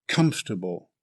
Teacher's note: Comfortable is an adjective with 3 syllables. Stress the first syllable.